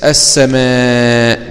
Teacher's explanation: اللام هنا حكمها الإدغام وجوبا، لوقوع السين بعد اللام الساكنة، والسين من الحروف المجموعة في أوائل البيت.